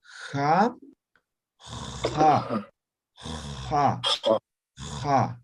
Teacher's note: pero aspirada o fricativa en todo caso, fricativa, como raspando.